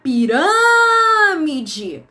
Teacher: na palavra pirâmide, a sílaba mais forte, ela tá na antepenúltima. Então, ela tem que ser uma proparoxítona.